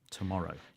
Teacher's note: you can't say tomorrow with the stress anywhere apart from the second syllable